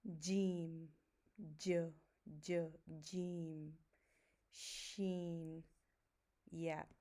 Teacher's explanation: the touch between tongue and the palate, it decreases as we move from Jeem to Yeah.